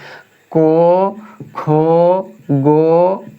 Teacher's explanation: को का पूरा ये जो है कंठ से बोला जाता है